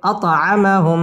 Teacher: ত কলকলার হরফ ধাক্কা দিয়ে পড়তে হবে أطعمهم মিম সাকিনের বামে মিম আসছে ইদগামে মিসলাইন গুন্না সহ মিলিয়ে